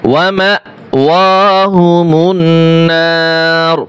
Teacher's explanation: যখন এখানে আমরা ওয়াকফ করব র পেশ রু আর উচ্চারণ হবে না, শুধু র উচ্চারণ হবে।